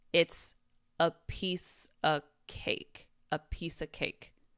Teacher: The second sound, the v gets dropped.